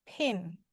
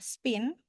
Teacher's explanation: Ee untuk aspirated eh sound ini ada lambang H di atasnya ya, ada lambang H-nya. PH peh berarti ada udara yang keluar dari mulut ya